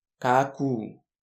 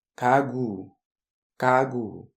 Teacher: Donc ce kyok va être sonore et va sonner proche du son g. Donc on dit ce mot kagu, kagu. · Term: consonne sonore